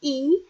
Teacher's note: yang tinggi dan tidak bundar ketika kita menyebutkan I